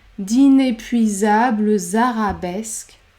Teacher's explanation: liaison est obligatoire entre l'adjectif et le nom d'inépuisables arabesque et pour une fois on va prononcer le E à la fin du mot inépuisable puisqu'il y a deux consonnes devant B et l et la consonne phonétique Z après d'inépuisable arabesque